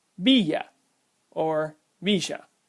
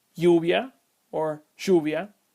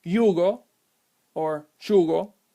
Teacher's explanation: you will most likely hear me pronounce my y's as a sh sound as that is part of how the Y is pronounced in Uruguay